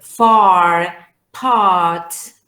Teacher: this is the ah sound really back oh yeah open and back